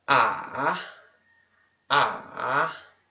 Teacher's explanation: o tom desce e depois sobe